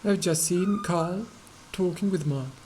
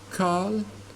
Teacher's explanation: this little ra is not pronounced